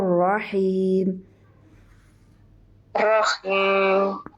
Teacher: را کو پر کیجیے اور رحیم میں ہاں باریک ہوگا